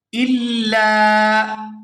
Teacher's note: یہاں لام کو الف مدہ کی وجہ سے کھینچ کر ادا کیا جائے گا